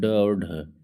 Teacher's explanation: ड और ढ जो है जब ड और ढ बोलेंगे तो ओठ मतलब जीभ जो है वो हल्का फोल्ड होकर पीछे की तरफ जाएगा और झटके से आवाज निकलेगी · इनके उच्चारण में जीहवा नोक उलट कर नीचे के हिस्से से कठोर तालु के झटके से छूती है। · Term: उत्क्षिप्त, उत्क्षिप्त या दुगण व्यंजन